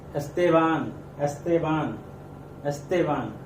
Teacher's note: तो ते पे हमारा स्ट्रेस आएगा